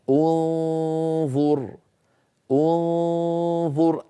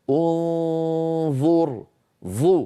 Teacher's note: أنتقل من مخرج الهمزة إلى مخرج الظاء من غير ضغط، وأنطق الغنة، غنة النون المخفاة، ثم أضغط لأخرج الظاء، انظر، ظو. فلما أصل إلى ظو أضغط.